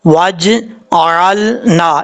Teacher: یہاں پر جیم میں قلقلہ تو ہے، لیکن قلقلہ کرتے ہوئے ایسا نہیں ہے کہ اس کے اوپر آپ نے زبر پڑھنا ہے